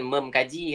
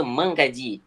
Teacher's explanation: Di langit lembut, langit lembut. Jadi konsonan langit lembut, apa konsonan sengawan yang ada daerah sebutan sama dengan K? NG. Jadi dia mesti tukar jadi NG.